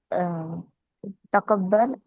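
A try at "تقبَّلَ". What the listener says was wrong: तकब्बला, ठीक है। एंड वाली हरकत जरूर बोला करें।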